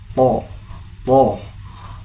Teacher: Huruf th seperti kampak yang terbalik. Adapun makharijul hurufnya berada pada ujung lidah bersama pangkal-pangkal gigi seri seperti menyebut huruf ta namun lebih kuat dan tidak disertai nafas.